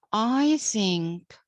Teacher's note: I is a pronoun, a personal pronoun, so it's unaccented, while think is the main verb, so it's accented